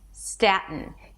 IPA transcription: ˈstætən